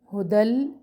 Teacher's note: تنوین کو ہم لام سے ملا رہے ہیں. یہاں پر ہم کر رہے ہیں ادغام بلا غنہ، غنہ کے بغیر ہے. لام تشدید پر زیادہ نہیں رکنا.